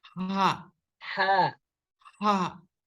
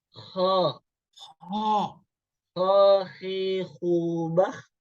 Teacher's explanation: Ya, kalau ha ini tengah-tengah. Kalau kho, kalau dari atas, tenggorokan atas pasti keluarnya itu kho.